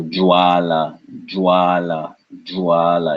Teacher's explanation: your tongue can say the J sound, whereas your teeth and your lip is really pronouncing the va